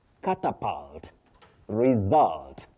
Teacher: the u takes what we call the mid central sound